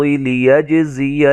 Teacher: زا کو سیٹی سے ادا کریں گے